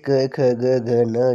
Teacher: इनका जो उच्चारण स्थान है वह कंठ से है, ये भी आपने याद रखना है, वर्ण ध्वनि कंठ ही है।